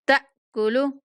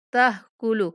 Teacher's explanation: کریں گے، زرعا تأکلو، تا کے بعد ساکن حمزہ ہے تو ساکن حمزہ کو ہمیشہ جھٹکے کے ساتھ پڑھا جاتا ہے ، تأکلو، یہاں پہ تک نہیں پڑھنا کہ تک کاف لگے،